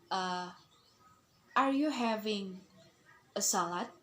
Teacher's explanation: So the sentence will have intonation rises and then it falls. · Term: rise and fall intonation